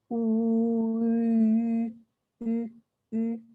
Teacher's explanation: Or if I make an oo sound and then I slide my tongue forwards, ooh, ooh, ooh, right? It's a combination of the E tongue and the oo lips